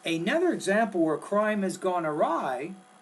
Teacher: the tone needs to rise at the end of the appositive, and then we know you're getting ready to introduce the independent clause.